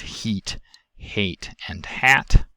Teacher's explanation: is less in the dotted line when the jaw is higher our tongue height dimensions go from high to mid to low